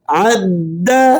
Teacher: عین کو درمیان حلق سے ذرا زور کے ساتھ ادا کیجئے